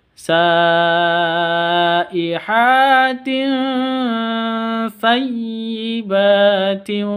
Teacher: Tanwin bertemu dengan sa, huruf sa. Samar didengungkan karena ikhfa hakiki. Sayyibatin, ba panjang 2 harokat karena fathah berdiri, ada tanda berdiri.